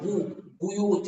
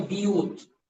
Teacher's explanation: با کے ضمہ کو کسرہ سے بدلنا